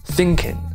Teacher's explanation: Now, you'll find that most Southerners will not even pronounce the G when they're speaking informally